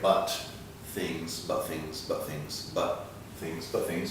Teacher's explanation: We have some very light things happening here. The T and the TH can combine a little bit here.